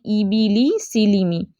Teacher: निचले जबड़े और आवाज़ का नीचे की तरफ जाना, आवाज़ बारीक और पस्त होगी, और तलफ़्फ़ुज़ इंग्लिश के हर्फ ई जैसा होगा, ए जैसा नहीं होगा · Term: कसरा, ज़ेर